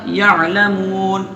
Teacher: تو یعلمون میں نون پہ زبر ہے. جب ہم ٹھہر جائیں گے تو یہ زبر گرا دیں گے